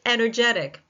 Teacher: it's the third syllable that takes the stress in energetic.